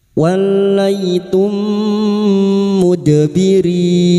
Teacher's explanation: mim sukun bertemu mim idugam mimi memasukkan atau mentasdidkan dua mim masuk pada huruf mim berikutnya disertai mendengung selama tiga harakat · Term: idgham mimi